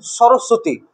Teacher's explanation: সরস্বতীতে ব একটা আছে, হ্যাঁ, তো বটা উচ্চারণ করছি না আমরা, ঠিক আছে, তো বটা সাইলেন্ট থেকে যাচ্ছে, তো ওটাকে আমরা কি বলি? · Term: ব ফলা